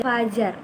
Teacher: Contohnya dalam kata fajar. Fajar itu ada sedikit angin yang keluar nantinya ketika menyebutkan fonem F